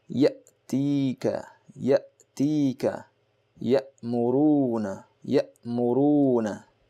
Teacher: the hamza on which there is a jazm will be pronounced abruptly, very fast